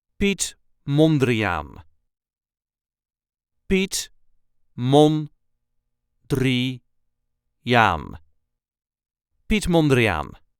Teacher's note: there is a slight emphasis on the first syllable of the last name